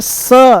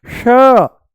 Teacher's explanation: इसका उच्चारण है श, मूर्धा ऊपर है ना श, और इसका है स, स, ये है स, दांतों से बोला जाएगा, ये है तालू से श। ये क्या है, श, श, शलजम, ये आपको तालू में महसूस होगा।